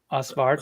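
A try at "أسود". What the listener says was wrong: Eswid. It's it's pronounced like Yeah, Eswid. It's like if you were to take out the R and just pronounce.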